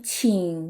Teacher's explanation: too it's a little similar to the English CH sound and it has a similar tongue placement as the Chinese X instead of putting the tip of your tongue high up you put it right behind your lower front teeth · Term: the Chinese Q sound